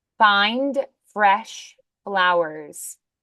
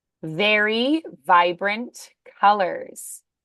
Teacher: F is voiceless, V is voiced.